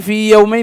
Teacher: قال فإن كثيرا من المصنفين يذكره فيما يستثنى من إدغام المتماثلين، وعند النظر في تعريف المتماثلين عنده لا تجده داخلا فيه، فإنه يشترط اتحاد المخرج ولا اتحاد فيما يستثنيه، إذ الياء الأولى حرف مد وخروجها من الجوف، والأخرى حرف علة وخروجها من وسط اللسان